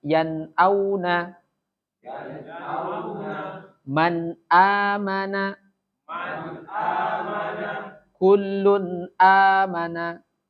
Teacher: membunyikan nunnya atau tanwin harus dibaca jelas tanpa ada dengung. Ya tadi seperti hamzah yan auna langsung jelas, nun matinya jelas, hamzahnya juga jelas ya. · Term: tanpa dengung